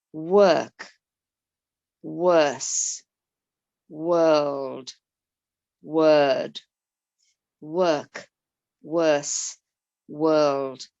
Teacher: and the or we're usually familiar with this being the sound of or aren't we but in these words it's the er sound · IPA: /ɜ:/